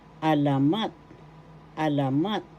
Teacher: First syllable a, second syllable la, third syllable mat. The third syllable has the accent